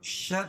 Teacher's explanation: شر شین کو را میں ملائیں گے اور را کے نیچے، رائے مشددہ کے نیچے زیر ہے تو را باریک ہوگی